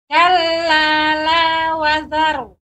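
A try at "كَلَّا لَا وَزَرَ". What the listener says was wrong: Zainya lebih ditampakkan Ibu. Kalla la wazar.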